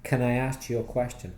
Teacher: that's the normal way to pronounce the word can in a question quickly there's no emphasis on it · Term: weak form